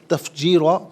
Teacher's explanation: را پر 2 زبر کی تنوین ہے، 2 زبر کی تنوین وقف میں الف سے چینج ہو جائے گی